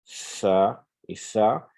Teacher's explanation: Il faut mettre le bout de la langue entre les dents. C'est une lettre interdentale. Donc, il faudrait pouvoir mettre le bout de la langue, venir frotter les incisives supérieures.